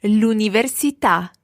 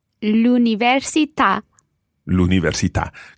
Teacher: The stress goes on the last syllable there.